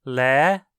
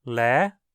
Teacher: Em outras palavras, você precisa fazer o tom subir dentro da vogal, pronunciá-lo num tom ascendente. Lé. O acento agudo, então, quando em cima de uma vogal longa, indica que a segunda metade dela é pronunciada alta.